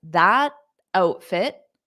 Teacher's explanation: we don't need to pronounce that T or else it will create a pause